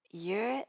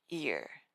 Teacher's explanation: the smooth vowel sound and the high tension y sound